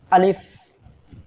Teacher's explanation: আলিফ অক্ষরটি আমাদের মুখের খালি জায়গা থেকে উচ্চারিত হবে। · আলিফ উচ্চারণের সময় প্রথমে একটা ধাক্কা হবে, তারপরে আমরা যখন শেষ দিকে যাব উচ্চারণের, তখন নিচের ঠোঁটের পেট উপরে দুই দাঁতের আগার সঙ্গে লেগে হালকা বাতাস বের হবে।